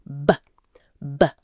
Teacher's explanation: Feel that vibration. For B, both lips come together and release with voice.